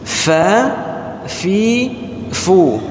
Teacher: Jangan dibaca fe, tapi bacanya fi. Nah, dan cara pengucapan huruf fa, kalau kita letakkan tangan kita di depan itu berhembus nafas. Kalau belum berhembus berarti belum benar.